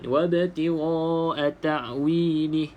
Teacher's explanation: hamzah mati ni pastikan bunyi makhrajnya di bawah, yang paling dalam halqum tu paling dalam. Kalau keluar sedikit dia dah jadi bunyi macam ain.